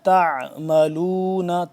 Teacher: ان اللہ بما تعملون، تا عین زبر تا، عین کو حلق کے درمیانی حصے سے کھچاؤ پیدا کر کے زور لگ کے ذرا ادا ہوتا ہے